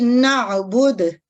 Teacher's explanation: تیسرے میں دیکھیے نعبدو، اب جو دال ہے یہ مدموم ہے یعنی دمہ کی صورت میں کیا ہوگا، جب اس نعبدو پہ ہم وقف کریں گے تو دال جو ہے یہ سکون میں بدل جائے گی